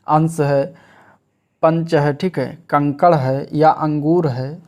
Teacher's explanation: इसके उच्चारण में नाक से अधिक सांस निकलती है और मुख से कम निकलती है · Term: अनुस्वार नासिक व्यंजन